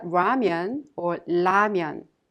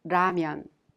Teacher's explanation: a sound in between the L Sound and the r sound